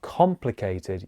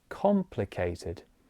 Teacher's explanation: the first syllable of that word is very stressed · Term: stressed syllable